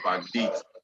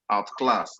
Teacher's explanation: Back is a word, date is another word, but they are together, backdate. So the stress is going to come on the second word, which is the date. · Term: verb compound word